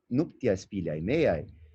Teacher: se pronuncia de maneira quase que junta, quase como uma única palavra fonológica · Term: elisão